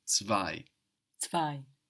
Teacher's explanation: We will find the English T turning into a German Z, and this is what we see in two, which is of course spelled T-W-O in English, and zwei in German. We have the Z like TS, we have the W like a V, and then we have that EI giving us I